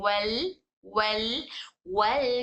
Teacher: जैसे फत, वल वल वल, जब लाम पढ़ रहे हैं वल, लाम पढ़ते वक्त में जबान वहां हमारे ऊपर मसोड़ों को चिपकने की वजह से आवाज बाजू से निकल रही है, वल वल, हमारे मुंह के दोनों साइड से सब बाहर से आवाज निकल रही है